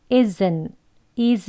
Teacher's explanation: 공기를 으 하고 나오려는 공기를 탁 막으면 으 하는 소리가 있습니다 IS IS 한 다음에 으 하고 공기로 막으면서 소리가 끝나요